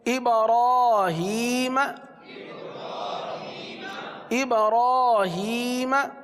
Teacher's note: قاعدے کے اندر کیا لکھا ہوا ہے کہ اگر را پر کھڑا زبر ہو تو را کو پر پڑھیں گے